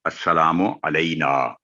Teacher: نون پر زبر ہے، ساتھ الف ہے، تو اس لیے یہ آخر پہ آواز 2 سیکنڈ لمبی کر کے پڑھا جائے گا